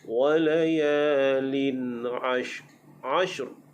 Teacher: Lin a dibaca dengan hukum izhar, iaitu apabila tanwin di sini atas bawahnya sama. Tanwin atas bawahnya sama bertemu dengan huruf ain, maka dibaca dengan hukum izhar, nyatakan bunyi tanwin.